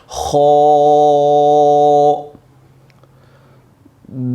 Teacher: خو حلق کے اوپر والے حصہ سے ادا ہوتا ہے۔ خو کی ادائیگی کرتے وقت آپ نے اس کو پر پڑھنا ہے، یہ موٹا حرف ہے، اس کو آپ پر پڑھیں گے، موٹا کر کے پڑھیں گے۔